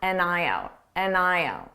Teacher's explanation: Now let's talk about an eye out. Because native speakers will combine all these sounds together so it sounds like one